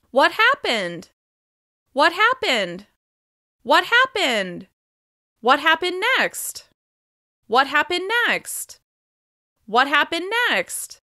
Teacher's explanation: the higher pitch on these questions is encouraging the other person to keep sharing details of their story